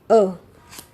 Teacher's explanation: हमारी जिह्वा का मध्य भाग सक्रिय रहता है स्वरों के उच्चारण में, तब उसे मध्य स्वर कहा जाता है। तो हिंदी में केवल एक ही मध्य स्वर है, वो है अ।